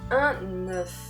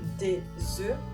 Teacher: la consonnante f ne se prononce pas et le son devient plus fermé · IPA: [ø]